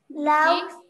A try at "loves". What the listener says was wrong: L-O-V-E-S. S is there. So how will you read that word? Loves.